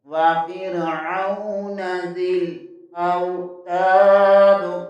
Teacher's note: تا زبر کے آگے الف مدہ ہے، اسے 1 لفظ کے برابر کھینچ کر پڑھیں گے · حمزہ زبر کے آگے واو ساکن آ رہا ہے، یہاں بھی واو لین ہوگا